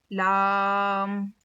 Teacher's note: जुबान के किनारे को सामने के चार दांतों के मसूड़ों में लगाने से लाम अदा होता है